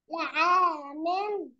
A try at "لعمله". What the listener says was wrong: لعمله، لعمله، لعمله، مش في مدود، لعمله على طول.